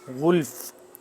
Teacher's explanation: غین کو موٹا پڑھیں گے